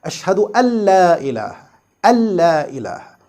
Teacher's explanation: Yes, this is a very famous sentence as we say and hear it in every adhan. Here we merge this noon completely into the next letter lam without any gunna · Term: complete ادغام